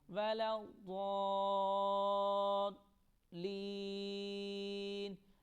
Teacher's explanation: اس مد کو 5 الف کی مقدار میں لمبا کریں گے